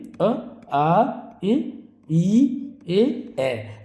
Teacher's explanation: वे स्वर जिनका उच्चारण करते समय ओष्ठ गोल नहीं होते अपितु फैल जाते हैं। यानी इस तरह से फैल जाएंगे तो उसको बोलेंगे हम आवृत्त मुखी या आवृत्ताकार। · इन स्वरों के उच्चारण करते समय हमारे ओष्ठ गोल नहीं होंगे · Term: अवृत्ताकार